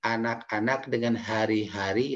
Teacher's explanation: A dengan H itu satu makhrajul huruf ya, posisinya di tenggorokan paling bawah. Jadi cara pengucapannya anak-anak dengan hari-hari itu sama persis ya, penekanannya seperti itu.